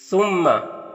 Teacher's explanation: सुम्मा सा को बारीक पढ़ना है और मीम मुशद्द है तो गुना होगा। यानी मीम की आवाज को नाक में ले जाकर गुनगुनाएंगे।